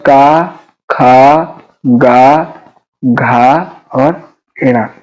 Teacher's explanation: तो जो इतने वर्ण हैं, तो इन वर्णों का उच्चारण कहाँ से होगा? इन वर्णों का उच्चारण होगा कंठ से, गले से इनका उच्चारण होगा